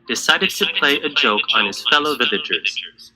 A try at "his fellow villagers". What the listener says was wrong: Drop H.